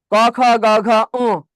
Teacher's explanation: ক, খ, গ, ঘ, উ, এটা হলো কণ্ঠনালী থেকে উচ্চারিত হয়, এই জন্য এটাকে বলা হয় কণ্ঠধ্বনি।